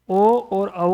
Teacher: ओ और औ के उच्चारण स्थान भी दो होंगे। कंठ होगा और ओष्ठ भी होंगे